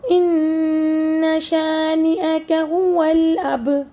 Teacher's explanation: با چونکہ کلکلا حرف ہے اور اس پہ جب ہم وقف یا ساکن دیکھتے ہیں تو پھر ہم نے کلکلا کرنا ہوتا ہے، یعنی جھٹکا دے کر پڑھنا ہے، ہلا کر پڑھنا ہے۔ با کے اوپر چھوٹا سا سرکل بنا لیجئے تاکہ آپ کو یاد رہے کہ جس طریقے سے بال باؤنس بیک کر کے آواز نکالتا ہے اسی طرح ہم نے کلکلا والے لیٹر کو باؤنس بیک کر کے پڑھنا ہے۔